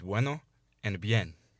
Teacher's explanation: Notice how the u and the I in these words are pronounced as a semivowel, like a w or a y, instead of a full vowel like a u or an e.